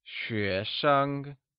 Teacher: 学生 uses the mid-rising tone on 学 and a neutral tone on 生.